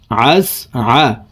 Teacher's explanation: আইন হরফকে হলকের মধ্যখান থেকে উচ্চারণ করব